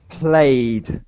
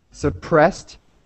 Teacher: played has a D sound but something like suppressed has a t sound